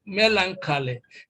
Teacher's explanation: when you learn a word like melancholy, then of course you know that stress is placed on the first syllable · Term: primary stress